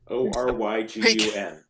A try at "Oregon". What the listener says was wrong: Yeah, but the Y is really fast. Super fast. Like you don't even hear it.